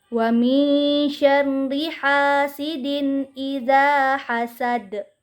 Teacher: da ini berharokat fathah tetapi karena diwakafkan jadinya berharakat Sukun dan cara membacanya dipantulkan dengan pantulan yang kuat ataupun dengan pantulan yang besar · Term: qolqolah kubro